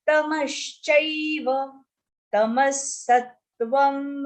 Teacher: This is ai, which is a and e, combination of two swars, a and e.